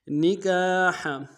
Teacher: نکاح میں کاف کے سالف مدہ ایک مقدار میں کھینچیں گے، ہا کو گہرائی سے ادا کریں گے۔